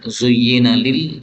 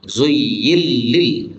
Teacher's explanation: Jadi nonnya hilang. Menjadi lam. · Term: idgham